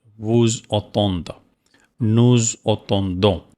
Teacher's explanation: pronounce here Z, because it starts with vowel and last is S. That is called liaison. Liaison. Here is S and here is A.